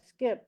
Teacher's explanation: there's no aspiration on the K